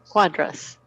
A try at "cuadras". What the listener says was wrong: Abre un poquito más la A, la segunda A. Cuadras. Sí, recuerden que nosotros todas las vocales las pronunciamos muy bien. We pronounce all the vowels like really open and kind of well.